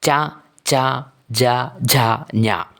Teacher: ചായുമായി ബന്ധപ്പെട്ടിട്ടുള്ള അക്ഷരങ്ങൾ ഉച്ചരിക്കുന്നത് അണ്ണാക്കിൽ തട്ടി കൊണ്ടാണ് ചാ എന്ന് പറഞ്ഞു നോക്കുമ്പോൾ നമുക്ക് മനസ്സിലാകും ഒരു തടസ്സം വരുന്നത് എങ്ങനെയാണ് എന്നുള്ളത് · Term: താലവ്യം